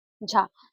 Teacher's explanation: झ जो है यह अक्षर तालु से उच्चारित होने वाला व्यंजन है।